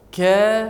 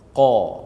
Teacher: Ini huruf ka yang nipis, bukan huruf qa.